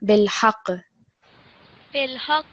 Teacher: with the qaf in particular, when it takes a sukoon, you're going to vibrate that sound and extra stress on it because it's still a shadda letter.